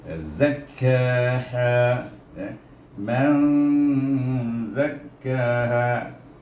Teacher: Ini dia huruf zai, bukan zal, zai. Yang lebih kuat lagi desiran dia, safir dia punya seperti unggas tu lebih kuat bunyinya daripada zal.